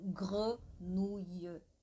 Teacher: o E sem acento, ele é fechadinho